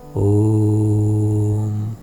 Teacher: जब किसी स्वर का उच्चारण बहुत लंबा हो तो इसे प्लुत स्वर कहते हैं, जैसे ओम। ओम के उच्चारण में मध्य स्वर बहुत लंबा हो जाता है